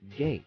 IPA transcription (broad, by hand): ɡeɪt